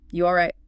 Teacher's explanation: Remember, the voice goes down and gets quiet. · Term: soft lullaby tone